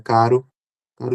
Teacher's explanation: Aqui estou pensando exatamente no de caro, que é um som bem rápido. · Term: fonema TEP